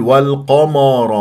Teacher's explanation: مفخمه مرتبه ثانيه مفتوحه ولا اكور الشفاه اقول والق والقمر غلط ولا افخم الميم لان انحصرت ما بين الراء المفخم